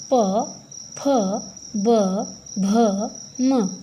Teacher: हर बार जब हम इनका उच्चारण करेंगे तो हमारे होंठ जो हैं वो आपस में टच हो रहे हैं दोनों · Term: प वर्ग